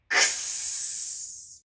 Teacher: It's kind of made up of 2 sounds. This time it's our K and our S. So we're going to put those together.